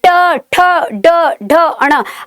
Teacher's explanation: आपकी जो जीभ है वो ट्विस्ट हो जाती है। ठीक है, तो इसलिए इसे मूर्धन्य व्यंजन कहते हैं।